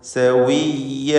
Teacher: ഷഫത്താനിയാണ് അതിൻ്റെ മഖ്റജ്. ചുണ്ടുകൾ വൃത്താകൃതിയിലായിരിക്കും വാവ് ഉച്ചരിക്കുമ്പോൾ.